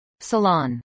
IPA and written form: səˈlɑːn (salon)